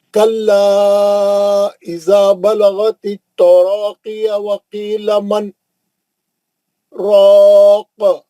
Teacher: मन बोल के रुक जाना थोड़ी देर, फिर उसी सांस में आगे पढ़ना. सांस नहीं बदलना, उसी सांस. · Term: सकता